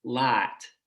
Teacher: older speakers, their lot vowel, the word in the vowel in doctor and lot and mom and so on and so forth, is further forward in the mouth, consistent with the Northern Cities shift.